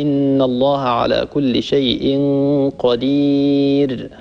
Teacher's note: الراء هي حرف مجهور لأنها ليست من حروف الهمس حرف مجهور يعني لا يجري معها النفس فانتبه لهذا هي ليست حرف مهموس الحروف المهموسة فقط سكت فحثه